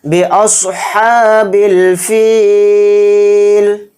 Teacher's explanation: بِأَصْحَابِ الْفِيلِ، تو دھیان سے دیکھیں، صاد کو یہاں پر موٹا پڑھیں گے، ہا کے اوپر کھڑا زبر ہے، ہا کو تھوڑا کھینچ کر پڑھیں گے اور ہا کو حلق سے نکال کر ادا کریں گے